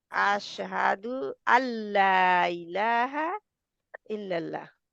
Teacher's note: अब मेरी जगह फिर खत्म हो गई, मैं क्या करूं इसको, अशहदु, जहाँ पे अल्लाह, इलाहा नून लाम में मर्ज हो जाए।